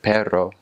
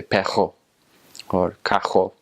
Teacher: with their R's, they'll say, instead of perro, they'll say pejo or cajo. So it's kind of like a guttural noise